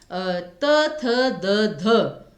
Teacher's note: इनको बोलने में तो आपने जीभ को पूरा पूरा ऊपर के दांतों से टच किया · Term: दंत्य